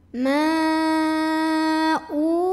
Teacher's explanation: Maka mimnya panjangkan boleh 4 boleh 5 harokat. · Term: mad jaiz munfasil